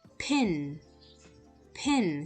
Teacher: so there's a puff of air